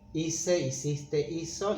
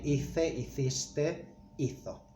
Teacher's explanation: we want to keep the S sound, or in Spain the Th sound, we have to change this C for a Z.